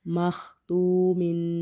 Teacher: واو ساکن ہے اور واو سے پہلے پیش ہے تو ہم اس کو پڑھیں گے واو مدہ تو اس کو بھی ایک الف کے برابر لمبا کر کے پڑھیں گے